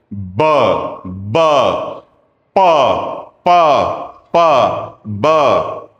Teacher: दोनों ही बाइलेबल हैं, दोनों में ही होंठ यूज हो रहे हैं, जैसे उनको खोला जा रहा है आवाज आ रही है। दोनों ही प्लोजिव हैं, उससे पहले प्रेशर बिल्डअप हो रहा है, फिर वो खुल रहा है।